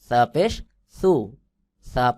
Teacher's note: পাতলা করে জিহ্বার আগা সামনের দুই দাঁতের আগার সঙ্গে লাগাইয়া বাহিরের দিকে হালকা বাতাস বের হবে